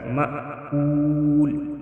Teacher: کول میں وائی مدہ ایک الف کے برابر کھینچ کر پڑھیں گے اور وقف کی صورت میں لام ساکن ہوگا